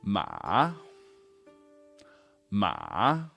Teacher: lot of bad habits with this one third tone is actually the lowest point in your vocal range · the one that's taught most commonly the big down up one would sound something like this ma ma down then up Ma · Ma, ma, down then up. Ma, slightly down and then way up.